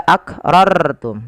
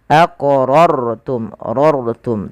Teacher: ro ini diwarnai dengan warna biru artinya rnya dibaca dengan tebal tidak dibaca aqrartum tapi dia aqrum Rum